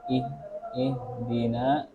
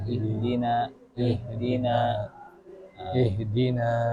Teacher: Lemahnya ha karena terlalu berlebihan menjauhkan dua pita suara